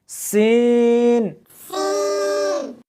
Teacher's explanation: اس حرف کو جب پڑھیں گے تو سیٹی کی آواز آنی چاہیے